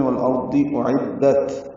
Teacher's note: حمزہ اقصی حلق سے، عین وسط حلق سے الگ الگ ادا ہوں گے